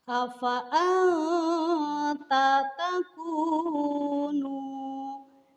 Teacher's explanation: Di sana terdapat nun sukun menghadapi ta. Maka nun sukun tersebut harus dibaca samar-samar. Tidak boleh dibaca jelas karena hukum bacaannya adalah ikhfa.